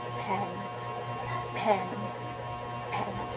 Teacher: The second one is mouth slowly open, tongue mid front, lower than e. Relaxed jaw, clear short sound.